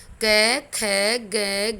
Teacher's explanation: जब तक हम कंठ से प्राण वायु को नहीं फेंकेंगे तब तक ये नहीं बोले जाते। अर्थात हमें प्राण वायु कंठ से फेंकनी होगी तभी ये बोले जाते। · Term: क वर्ग